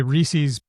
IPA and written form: ɹisiz (Reese's)